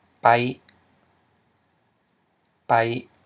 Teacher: which is a low tone because you have a mid consonant plus a live syllable. Okay, which equals a low tone.